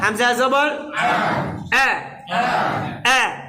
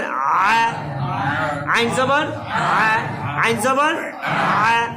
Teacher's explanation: হামজা আইন জবর, হামজা পাতলা এবং শক্ত, কিন্তু আইন পাতলা নরম।